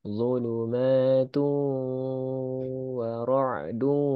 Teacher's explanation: Zulumatu dengungkan tanwin bertemu waw idgham bi gunnah